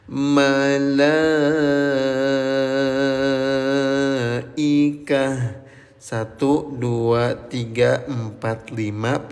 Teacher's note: Panjangkan bunyi lamnya selama lima ketukan. Diketuk lima kalinya biar terukur lima harakatnya.